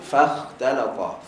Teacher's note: Fa nipis, kha tebal, ta nipis, lam nipis, ta tebal. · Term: nipis tebal